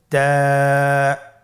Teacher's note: তা হরফটি বারিক হরফ এবং এক আলিফ টেনে পড়তে হবে আপনারা আমার সাথে বলুন তা আবার বলুন তা এর মাখরাজ কোন জায়গা থেকে জিহ্বার আগা সামনের উপরের দুই দাঁতের গোড়ার সঙ্গে লাগিয়ে উচ্চারিত হয় আপনারা আমার সাথে আবার বলুন তা মাশআল্লাহ আমরা সহজেই বা এবং তা চিনতে পেরেছি।